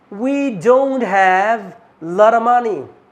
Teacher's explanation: هنعمل reduction للot of هنخليها لارا لارا